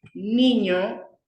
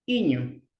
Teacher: Por ejemplo, en vez de decir niño, ellos dicen iño. O sea, lo omiten un sonido que es la N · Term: la omisión